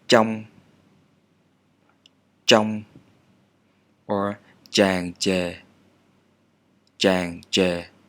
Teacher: Stop manner, and it's like triple or tron in English, but absolutely no aspiration. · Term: retroflex consonants